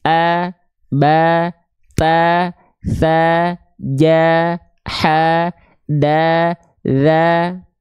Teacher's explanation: kalau ketika fathah dia dibaca dengan vokal a maka dia termasuk dalam huruf yang tipis